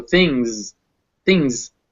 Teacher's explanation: this word is written with that s at the end but it's actually pronounced with a z so things things and it's that ng fused together into that · but it's actually pronounced with a z so things things and it's that ng fused together into that one sound